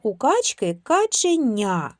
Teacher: В слові каченя перед буквою я, приголосний, вимовляємо м'яко.